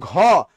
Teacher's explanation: যখন বলি গ, শ্বাস কম লাগে, অল্প প্রাণ। যখন বলি ঘ, শ্বাস বেশি লাগে, এটা হলো মহাপ্রাণ